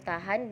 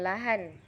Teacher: konsonan apikal apikoalveolar hambat tak bersuara